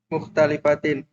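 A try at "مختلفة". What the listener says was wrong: kenapa kasroh? Mukh Talifa mukhtalifatun.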